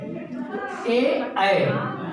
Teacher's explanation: जिह्वा है वो उस हवा को समेटते हुए जाके तालु पे स्पर्श हो गई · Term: कंठ तालु